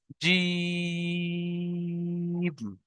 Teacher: জিম, এখানে তিন লেখা আছে, তাই আমরা তিন আলিফ পরিমাণ টান দিয়ে পড়বো। দেখেন, জিম, মানে এতটা বেশি টান হবে, তিন আলিফ পরিমাণ।